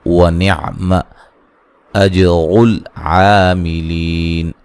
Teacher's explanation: فی یا مدہ ہے، ہا الف مدہ ہے، ونعم اجر العاملین را کو موٹا ادا کریں گے، جیم پہ قلقلہ ہے